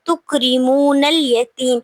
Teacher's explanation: یتیم پہ یائے مدہ ہو رہی ہے اور میم کو ہم ساکن کر دیں گے وقف کی صورت میں